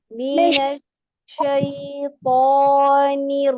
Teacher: नून को बारीक पढ़ेंगे, रा को तवस्सुत के साथ पढ़ेंगे। रा बेशक इस वक्त इससे पहले जो है वो जेर है, लेकिन इस रा के ऊपर जबर है तशदीद के साथ।